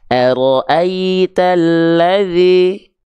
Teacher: Ketika momentum vokal i kita lafalkan, tengah lidah kita angkat mengarah ke langit-langit. Karena kalau tidak kuat, kurang diangkat tengah lidahnya, maka bunyinya tidak akan sempurna i tapi e.